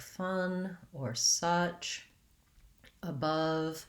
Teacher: I want to keep my tongue central and very relaxed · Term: tense schwa